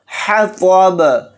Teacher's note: طا کو یہاں پر موٹا یعنی پر پڑھیں گے · با ساکن ہوگا تو با کے اندر قلقلہ بھی ہوگا